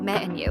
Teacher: and becomes an, or even just n